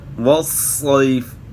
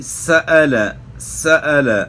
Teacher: آواز سے جو ہے نا آپ محسوس کر سکتے ہیں کہ ان کے اندر سیٹی کی طرح آواز پیدا ہو رہی ہے. اور یہ آواز اگر ان کے اندر پیدا نہیں ہو رہی، مطلب یہ کہ حرف تو ادا ہو رہا ہے لیکن ناقص ادا ہو رہا ہے، صحیح طریقے سے ادا نہیں ہو رہا. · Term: صفت صفیر